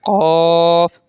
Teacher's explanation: باریک کاف کے مقابلے میں اسے تھوڑا موٹا کر لیں · زبان کی جڑ یعنی جہاں سے زبان آپ کی بنی ہے، جہاں سے زبان شروع ہوئی ہے، وہ زبان کی جڑ کہلاتی ہے۔ تو جب آپ قاف ادا کریں گے تو زبان کی جڑ جو ہے وہ تالو کے نرم حصے سے لگے گی اور پھر یہ قاف ادا ہوگا، ٹھیک ہے۔